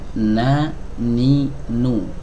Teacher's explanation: huruf nun adalah huruf yang keluar dari ujung lidah bertemu dengan gusi